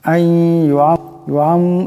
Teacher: নুন সাকিনের পরে ইয়া আসছে এখানে ইদগাম হয়ে যাবে ইদগামের একালিক পরিমাণ গুণনা হবে